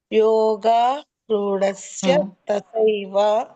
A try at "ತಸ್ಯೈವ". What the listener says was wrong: ತಸ್ಯೈವ. ತಸ್ಯೈವ ತಸ್ಯೈವ ಅಂದ್ರೆ ಯನು ಬರ್ಬೇಕು, ಐನು ಕೇಳಿಸ್ಬೇಕು. ಹಾಗೆ ತಸ್ಯೈವ.